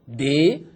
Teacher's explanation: Le D, effectivement, était un son très voisé, dans lequel les cordes vocales participaient beaucoup à la production du son et vibraient